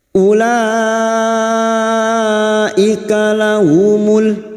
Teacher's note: huruf wau di sini dianggap tidak ada ya maka u-nya dibaca pendek